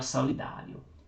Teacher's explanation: solidário aqui está com acento no dá, ele é uma paroxítona e terminado em ditongo, ió